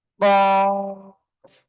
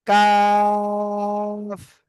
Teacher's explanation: মোটা আওয়াজে কফ, আর নিচেরটা কি চিকন আওয়াজে কাফ